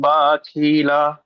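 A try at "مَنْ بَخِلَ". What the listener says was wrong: মাশাআল্লাহ, একটু বাটা একটু টান মতো হয়ে গেছে, বাটা টান দিবেন না। মাম বাখিলা। কায়দাটি বলেন তো জি, নুন সাকিনের পরে বা এসছে, কেমন করে পড়তে হবে? মাশাআল্লাহ, একে কি কায়দা বলা হয়?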